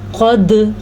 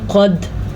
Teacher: ساکن آ جائے تو وہاں جھٹکے کی ایک کیفیت پیدا ہوتی ہے جسے قلقلہ کہا جاتا ہے